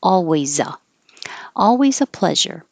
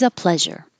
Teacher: in this case the S sounds like a z and it will connect to the a